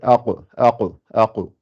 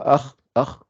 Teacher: le qaf, sa sortie, c'est là où il y a la luette, là, au fond de la gorge